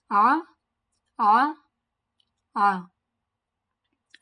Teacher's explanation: The first letter is Ain. It is one of the throat letters. It comes out from the middle part of the throat.